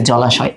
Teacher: আবার দেখো, শুধু দুইটা অ মিলে একটা আ হয়, ব্যাপারটা এরকম না। একটা অ, তার সাথে যদি একটা আধ্বনি যুক্ত হয় তবেও আধ্বনি হয়।